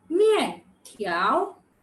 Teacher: So the falling tone and the rising tone, the fourth tone and the second tone.